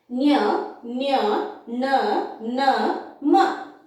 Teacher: ಅಂದ್ರೆ ಮೂಗು ನಾಸಿಕ ಅಂದ್ರೆ ಮೂಗು ಮೂಗಿನ ಸಹಾಯ ಅಂದ್ರೆ ಮೂಗಿನಿಂದ ಉಚ್ಚರಿಸಲ್ಪಡುವ ಅಕ್ಷರಗಳು ಮೂಗಿನಿಂದ ಉಚ್ಚರಿಸಲ್ಪಡುವ ಅಕ್ಷರಗಳಿಗೆ ಅನುನಾಸಿಕಗಳು ಎಂದು ನಾವಿಲ್ಲಿ ಕರೆಯುತ್ತೇವೆ